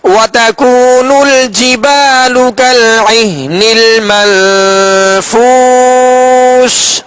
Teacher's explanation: نون ساکن کے بعد فا حروف اخفا میں سے، لہذا اخفا کا غنہ کریں گے